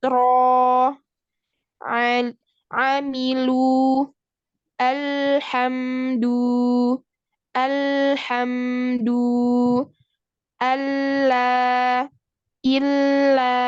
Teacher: lencongan terhasil di kedua sisi hujung lidah karena hujung lidah menghalangi laluan huruf lam.